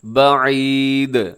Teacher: آخر میں دال ساکن ہوگی تو دال پہ قلقلہ ہوگا